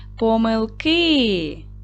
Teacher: Наголос падає на и, так, на кінець слова.